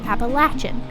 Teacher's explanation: In U.S. dialects in the southern regions of the Appalachians, the word is pronounced with the 3rd syllable sounding like latch, so Appalachian.